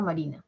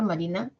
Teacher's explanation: Marina tiene 3 sílabas. La primera sílaba ma tiene sonidos sonoros. La M es una nasal, las nasales siempre son sonoras.